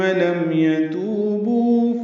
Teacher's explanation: لم میم ساکن پہ اظہار شفوی ہے. یتوبو یہ دونوں واو مدہ ہیں، تو اور بو دو دو حرکات لمبے کریں گے